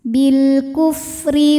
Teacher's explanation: maka rnya dibaca secara tarqik karena harakatnya kasrah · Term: tarqiq